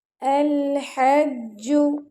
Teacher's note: अल लाम पर कलकला नहीं करना आपने अल अलहज्जू जी पर शदा है तो जी पर सख्ती